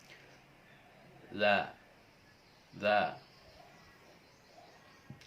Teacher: Huruf za dilafalkan dengan menyentuhkan ujung lidah ke dua gigi seri bagian atas dan suara mengalir lembut tanpa mengalirkan napas. Contoh za, za.